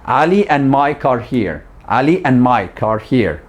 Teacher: the C in mic doesn't have that puff of air